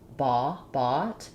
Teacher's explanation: Your jaw should be more open for the ah, and your lips are slightly round. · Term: rounded open back vowel